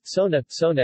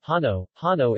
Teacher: The /s/ in Hindi is often realized as /h/ in Rajasthani